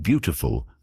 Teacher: In the word beautiful, the stress is on the first syllable